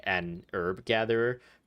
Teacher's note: in American they don't pronounce the h h is silent so it makes sense to for it to be an herb